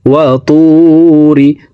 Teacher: ওয়াতুরি, ওয়াও জবর ওয়া, ত ওয়াও পেশ তু, র জের রি, ওয়াতুরি। তো এখানে ঠোঁট গোল করে একালিফ টেনে পড়তে হবে, কারণ পেশের বাম পাশে জজমালা ওয়াও মদার হরফ, ডান দিকের হরকতকে একালিফ টানিয়া পড়িতে হয়।